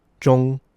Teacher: First and foremost, let's remember that the ZH creates a J sound in Chinese. The O sound is relatively closed. · the word ZHONG is first tone, so it's flat, relatively high-pitched,